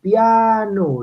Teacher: la I es una vocal cerrada y la A es una vocal abierta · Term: vocal cerrada más abierta